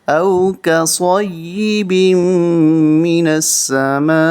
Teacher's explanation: اس مد کو 3 سے 5 الف تک کھینچیں گے، بڑی مد ہے۔